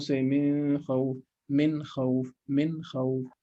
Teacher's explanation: Immediately from noon you move on to kha without merging or hiding.